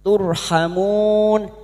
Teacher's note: Ro sukun yang didahului dumah. Kita baca tafkhim. Turhamun. Hamun huruf ha jangan tertukar.